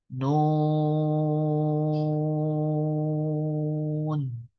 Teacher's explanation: Maka panjangkan nunnya 6 harokat.